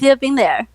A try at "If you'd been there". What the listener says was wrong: You're kind of missing the the D. You're making it too small. If you'd.